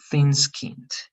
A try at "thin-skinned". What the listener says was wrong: one more time, this th a little bit softer.